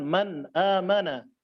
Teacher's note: pada idhar tetap ada gunnah atau dengung, akan tetapi dengungnya hanya sedikit